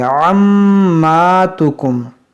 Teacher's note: यहाँ पर देखें मीम मुशद्दद है, इसमें गुन्ना करेंगे और ये आइन को हल्के वस्ते हल्क से अदा करेंगे।